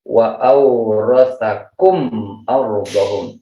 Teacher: izhar jelas, itu berarti tidak ada gunnah, cukup satu harokat saja. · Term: izhar syafawi